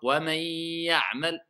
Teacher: tout simplement, vous laissez le son sortir des cavités nasales.